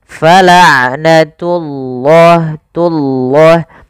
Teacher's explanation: pada lafal ain sifat bainiyah tidak terlalu ditahan suara ainnya dan tidak terlalu dilepaskan. Fala'natullah tullah, tunya jangan tebal, langsung jangan fala'natullah enggak, tapi dia fala'natullahi baru lafal Allahnya tebalkan.